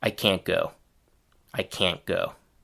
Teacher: However, there's still one important difference between the book pronunciation and the realworld one, which is that the final T sound changes into a stopped partial pronunciation of the T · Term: partial stopped T